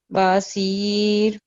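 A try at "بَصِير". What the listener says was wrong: با نہیں ہے، با کے اوپر مختصر ہے نا، حرکت مختصرہ ہے، چھوٹی حرکت ہے 1 سیکنڈ کے لیے.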